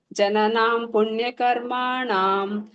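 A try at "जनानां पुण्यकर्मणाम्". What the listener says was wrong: ಪುಣ್ಯಕರ್ಮಣಾಂ ಅಲ್ಲಿ ಕರ್ಮಾಣಾಂ ಇಲ್ಲ ಜನಾನಾಂ ಪುಣ್ಯಕರ್ಮಣಾಂ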